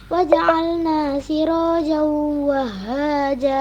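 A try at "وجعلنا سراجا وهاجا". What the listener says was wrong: Nah, siraja, janya masih za harus ja. Siraja wahaja. Jimnya saja kurang jelas ya. Huruf jim. Jajiju, tidak zazizu ya.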